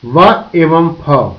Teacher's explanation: दंत्योष्ठ लैबियोडेंटल, वे ध्वनियां जो ऊपर के दांतों को नीचे के होठों से छूकर उच्चारित होती हैं, उन्हें दंत्योष्ठीय ध्वनि कहते हैं। इसमें ऊपर के अग्र दांत नीचे के ओष्ठ को छूता है तथा वायु प्रवाह को रोकता है। व एवं फ दंत्योष्ठीय ध्वनियां हैं।